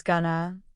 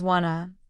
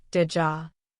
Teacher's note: going to often becomes gonna, want to becomes wanna, did you sounds like didja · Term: connected speech